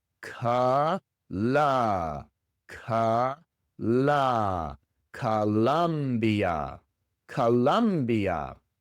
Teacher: Tanto la primera como la segunda O se pronuncian con el sonido de la famosa schwa.